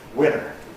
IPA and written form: ˈwɪnɚ (winter)